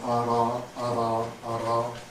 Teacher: Okay, so it's alveolar form. And it's voiced, so it's plus voice, alveolar, and it's tap. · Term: alveolar tap